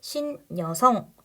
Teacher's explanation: 접두사 할 거고요 여성이라는 명사랑 합쳐지는 파생어 있죠 자 그러면이 경우에 앞에 말에 받침 있고 뒤에 말이 모음으로 시작했는데 그게 여니까 발음할 때 니은이 첨가돼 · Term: 니은 첨가 현상, 니은 첨가